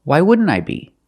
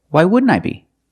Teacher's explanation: You see, the n t in wouldn't is between vowels. So, you don't really hear the t.